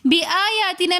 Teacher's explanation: بِآيَاتِنَا میں بھی مد منفصل ہونے کی وجہ سے ہم نے اس کو 3 الف کی مقدار کھینچ کر پڑھا